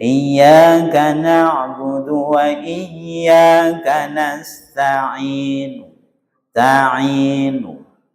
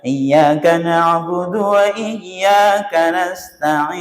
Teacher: Tetap dibaca dhammah tapi hanya 2 harokat. Tidak boleh dibaca panjang. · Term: ar-raum